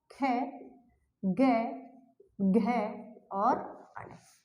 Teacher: कै वर्ग कंठ से बोला जाता है, इस वजह से इसे कहा जाता है कंठ वर्ग